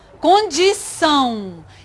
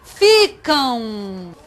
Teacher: Se chama ditongo nasal, porque é como se tivesse o A e o U.